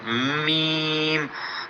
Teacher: میم دونوں ہونٹوں کی خشکی والے حصے کو ملا کر، جو باہر کی طرف ہوتا ہے، اس خشکی والے حصے کو ملا کر یہ میم ادا کیا جاتا ہے